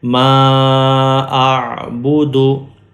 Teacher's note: وقف کی وجہ سے دال کی پیش نہیں پڑھی جائے گی اور ہم پڑھیں گے ما اعبدو.